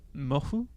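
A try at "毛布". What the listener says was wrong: Mofu. Oh yes, but they don't really pronounce the f in fu. It's more like mofu. Like you have the intention of making an F, but you don't.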